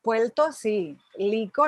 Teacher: la neutralización rl al final de sílaba